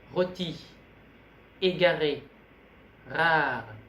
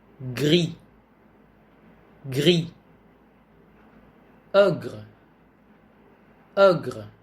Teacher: Đây là một phụ âm hữu thanh được phát trong cổ họng, như thể ta muốn phát âm K, âm K hay âm G. Âm R được phát ra bằng cách đẩy hơi từ hai bên, lưỡi thẳng, tựa lên răng dưới. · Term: âm R của tiếng Pháp